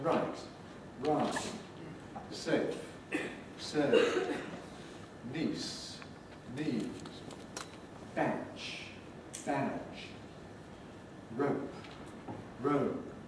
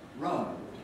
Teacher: when we have a vowel before one of these forties consonants, its duration is reduced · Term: Preforties clipping